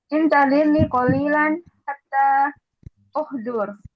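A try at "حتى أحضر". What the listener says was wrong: Jangan uhdur. Ahdura. Hatta atawaddo'a. Fathah kan? Hatta ahdura.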